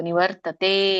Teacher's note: ಅರ್ಕಾವಳಿ ಇದ್ರೆ ಮೊದಲು ರ ಹೇಳಿ ಆಮೇಲೆ ತ ಹೇಳಬೇಕು ನಿವರ್ತತೆ ದೀರ್ಘ ಇದೆ ಎಳಿಬೇಕು ಇದೊಂದು ಅರ್ಥ ನಡೆಕೊಂಡು ಬರೋಣ ಏನು ಭಗವಂತ ಈ